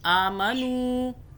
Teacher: آ کو کھینچیں گے، دیکھیں اوپر کھڑا زبر ہے. آمنو، نون کو بھی کھینچا واو کی وجہ سے، واو پھر مدہ ہو رہی ہے